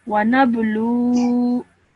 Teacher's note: when you're pausing, again, the vowel with the fatha becomes a vowel with a sukoon. So you stretch this sound for 2 seconds at the end